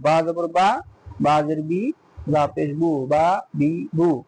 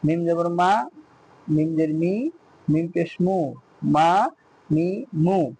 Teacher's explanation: বা ঠোঁটের ভিজে জায়গায়, মিম ঠোঁটের শুকনো জায়গায়